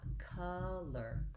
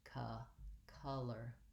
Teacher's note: And for the schwa vowel, my tongue is central and relaxed. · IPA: ʌ